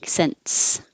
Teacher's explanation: Your tongue is going to the N position, and then when you release it to make the S, pulling it down from the N to the S lets air flow through, and that creates a tiny T